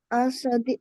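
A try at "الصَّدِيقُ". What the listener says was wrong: না লাম তো উচ্চারণ হবে না বিকজ সদটা হচ্ছে সোলার লেটার তাহলে আস সদিকু আলিফ সরাসরি সদকে ধরবে লাম উচ্চারণ হবে না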